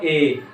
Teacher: जीभ भी नीचे रह रही है और गले से भी साउंड निकल रही है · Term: कंठ तालव्य